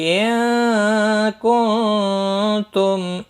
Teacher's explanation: نون ساکن کے بعد حروف اخفا کا کاف ہے، اخفا حقیقی ہوگا